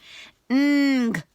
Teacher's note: The back of your tongue touches the roof of your mouth. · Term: NG sound